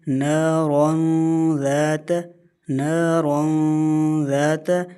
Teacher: دو زبر کی تنوین کے بعد حرف ذال آیا ہوا ہے، اور دو زبر کی تنوین کے بعد اگر حرف ذال آ جائے تو وہاں پر اخفا مع الغنہ کا قانون ہوتا ہے، یعنی کہ غنہ کریں گے، ناک میں آواز چھپا کر پڑھیں گے · ناک میں آواز بھی جائے گی اور را کو موٹا بھی پڑھیں گے